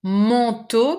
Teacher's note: Manteau, because we have this nasal sound, just like in pantalon, double nasal, en and on